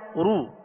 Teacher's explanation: دونوں ہونٹوں کو کامل گول کر کے ادا کریں گے. اگر کامل گول نہیں ہوں گے تو پھر رو سو لو یہ بن جائے گا، اور یہ ہے معروف مجہول طریقہ. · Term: پیش